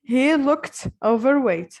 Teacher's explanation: we add the ed to it to become a t sound because look ends in a k sound